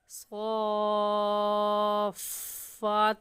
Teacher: تو حروف مدہ کھڑی زبر ہے، حروف مدہ کے بعد تشدید، اس تین دندانے والی علامت کو تشدید کہتے ہیں، اور قاعدہ یہ ہے کہ حروف مدہ کے بعد تشدید آ جائے تو اس مد کو مد لازم کہتے ہیں، اور اس مد کو 5 الف کے برابر کھینچ کر پڑھیں گے۔